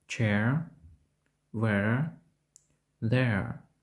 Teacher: Вимовляється цей звук подібно до air. Дифтонг починається зі звуку, подібного до e або українського голосного e, що переходить у нейтральний звук, схожий на e або ж a.